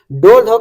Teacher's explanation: ड ढ का जो उच्चारण करते समय जीभ ऊपर जाकर झटके के साथ नीचे आती है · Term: उत्क्षिप्त